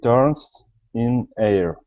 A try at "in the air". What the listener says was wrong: Now we're going to say in the. Make sure to pronounce the word the there. So in the air.